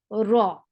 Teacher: Ra will be heavy here because whenever ra is with fatha or dhamma, it is always heavy. This heavy ra sounds like raw, raw.